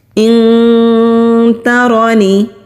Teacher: نون ساکن کے بعد تا آ رہا ہے تو یہاں پر ہم اخفا کریں گے